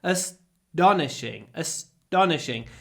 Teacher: it's almost like a du sound because it comes after s